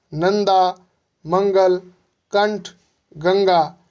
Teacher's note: अनुस्वार का उच्चारण स्वर के उपरांत किया गया है तथा इसका उच्चारण करते समय नाक से ध्वनि का संचार होता है।